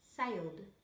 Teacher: D, when the word ends in a voiced sound, as in sailed.